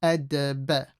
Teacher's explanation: The dal sakin will have qalqala.